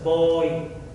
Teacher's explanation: your mouth going from that open O sound to the E sound actually kind of gives it that Y feeling